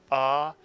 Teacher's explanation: And even in Sephardic Hebrew, there are instances when the kamatz does make this same aw sound, as in the word saw. But in Sephardic Hebrew, the kamatz is almost always making the same sound as the patach, ah, as in the word father.